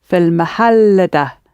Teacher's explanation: Notice because mahal actually ends on two l sounds, so the emphasis is fil mahal da